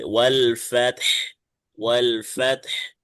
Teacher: বরাবর দুইটা হরফে সাকিন হয়ে যাচ্ছে, দুইটাই উচ্চারণ করতে হবে।